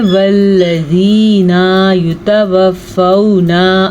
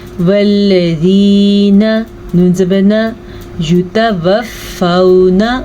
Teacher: वल्लज़ीना युतवफ़्फ़ौना, वल्लज़ीना नून ज़बरना, इसको लंबा करने की गलती मत कीजिएगा। अक्सर लोग पढ़ते हैं वल्लज़ीना युतवफ़्फ़ौना, अस्तग़फ़िरुल्लाह, ये एक बड़ी गलती है।